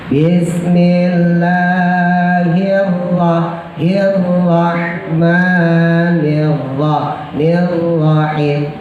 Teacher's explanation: ingat ro getarannya cukup 2 aja, jangan lebih dari 2 ya. Namanya takrir, gerakan atau getaran ro.